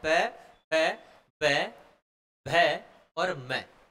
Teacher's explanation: जो श्वास वायु है वो होठों के पास आकर रुक जाती है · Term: ओष